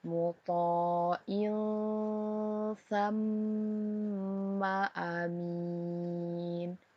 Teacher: Tanwin atau kasroh tayin kita baca samar, kemudian didengungkan karena bertemu dengan huruf sa, maka berlaku hukum bacaan ikhfa hakiki.